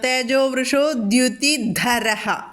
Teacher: ആ ധരഹലെ ധ ഒന്ന് ഘോഷമാണ്